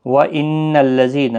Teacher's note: نون مشدد پر غنہ ہوگا